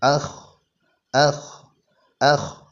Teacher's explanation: ശബ്ദം നടക്കുന്നുണ്ട് കാറ്റ് പുറത്തേക്ക് വരുന്നുണ്ട് അതോടൊപ്പം തന്നെ ശബ്ദത്തിന്റെ ഗതി അണ്ണാക്കിലേക്ക് ഉയരുന്നുമുണ്ട്